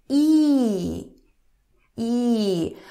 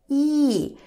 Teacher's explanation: when you pronounce E, the back of the tongue goes kind of upper.